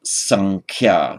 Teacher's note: Merge those together, we get the anuswara, the subdotted M, and that would be written as with a subdotted M, but most often pronounced sankhya. So in other words, this nasal sound takes the quality of the following consonant